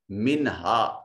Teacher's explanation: نون ساکن کے بعد ہا حرف اظہار ہے، نون کو ظاہر کر کے ادا کریں گے